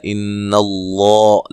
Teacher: لفظ اللہ کو موٹا ادا کرنا ہے، اس سے پہلے زبر ہے